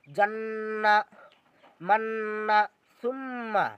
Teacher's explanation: মিমে আর নুনে যদি তাসদিদ হয় তাহলে গুন্না করে পড়িতে হবে আমাদেরকে।